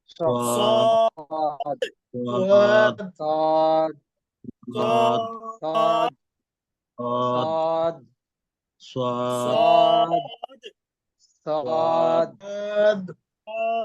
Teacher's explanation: জিহ্বার আগা সামনের নিচের দুই দাঁতের মধ্যখানের সাথে লাগিয়ে উচ্চারণ হবে সদ।